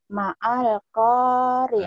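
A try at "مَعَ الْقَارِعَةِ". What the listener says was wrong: Ah, itu tertipu Ibu. Ma'al. Ma'al dari mana? Hamzahnya wasal. Mal. Jadi bukan ma, bukan ma'al kan alifnya enggak ada barisnya. Mal. Ini kan al qari'atu mal qari'ah.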